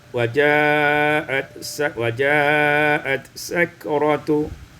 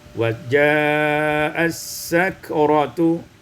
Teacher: Pada ayat yang ke-19, waja'at sakratu, idghamut ta fit ta, dibaca idghamut ta fit sin, diidghamkan ta pada sin maka menjadi waja'as sakratu.